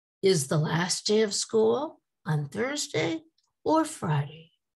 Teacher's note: you notice the voice does not go up at the end of the sentence with these either or questions